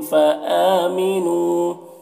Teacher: فآمنو حمزہ میں کھڑا زبر ہے، اسے 1 الف کے برابر کھینچیں گے۔ نو میں واو مدہ ہے، اسے بھی 1 الف کے برابر کھینچیں گے